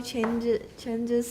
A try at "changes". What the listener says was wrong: No. You had the vowel right the first time. Keep the vowel. Changes. Changes is Z at the end, not S. Changes.